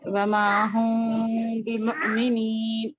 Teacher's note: بعد با آیا ہے نا تو हाँ اس کو کرنا ہے میم کو ناک میں تھوڑی دیر چھپا کر پڑھنا ہے